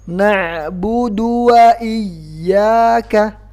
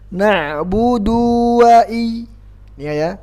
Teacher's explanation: Jadi langsung ke huruf waw setelahnya, jangan dipanjangkan.